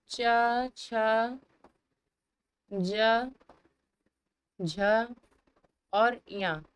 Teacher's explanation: ये सब आपका तालु से उच्चारित किए जाते हैं